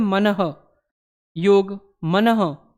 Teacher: ह के स्वरूप का मतलब है कि जहाँ से विसर्ग बोला जाता है वहीं से आपका ह बोला जाता है कंठ से, जो स्वर यंत्री होता है। · जब मनः बोलते हैं, देखो लास्ट में हमारे मुख से कैसी आवाज़ निकलती है, ह जैसी ही निकलती है